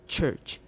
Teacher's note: There is a voiceless affricate at the beginning and end of the word church.